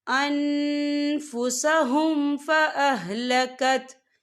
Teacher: حرث قوم ظلموا انفسهم فاہلکت، یہاں دیکھیں ان، یہاں نون ساکن ہے، نون ساکن کے بعد جو ہے فا آ رہا ہے، اور فا جو ہے اکفا کا ورڈ ہے، تو ہم یہاں اکفا کریں گے، نون ساکن کی آواز کو ناک میں چھپائیں گے · وقف کی صورت میں ہا جو ہے ساکن ہو جائے گا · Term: وقف مطلق